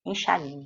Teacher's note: Enxaguei, nesta palavra, nós já vamos eliminando também, porque o guei, enxaguei, você pronuncia de uma vez esses três sons vocálicos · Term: tritongo